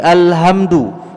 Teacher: huruf ha itu Bapak ada di tenggorokan bawah kita